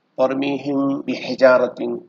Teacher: میم ساکن کے بعد حرف با آ جائے تو اخفا ہوگا، یعنی دونوں ہونٹوں کو ملا کر نرم غنہ سے پڑھیں گے